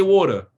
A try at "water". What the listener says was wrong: So you pronounce the E and R. We don't pronounce the E and R.